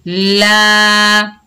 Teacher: लाम के ऊपर ज़बर, आगे अलिफ खाली है, ये अलिफ मद्दा है, इसको एक अलिफ की मिकदार खींचकर पढ़ेंगे